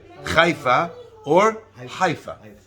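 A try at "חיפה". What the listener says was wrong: Chet is supposed to be softer.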